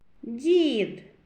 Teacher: перший звук дь м'який приголосний